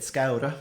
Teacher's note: you get scaura with the tapped R, kind of like a Spanish tap R